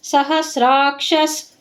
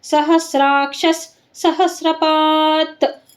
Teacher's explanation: ಕ್ಷ ಮುಂದೆ ವಿಸರ್ಗ, ವಿಸರ್ಗದ ಮುಂದೆ ಸ, ಅದಕ್ಕೆ ಕ್ಷಸ್.